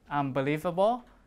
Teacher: because m is also a bilibial right so they match right the m matches the place of the p and the b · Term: assimilation of place